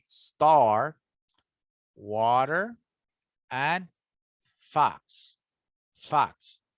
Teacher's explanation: the tongue is low in the oral cavity with the tip positioned behind the lower teeth the jaw is dropped very low · the jaw is dropped very low although its position might vary depending on phonetic context the lips are semi-rounded that is neither stretch it out nor · the lips are semi-rounded that is neither stretch it out nor too rounded so it's a little relaxed it's rounded but a little relaxed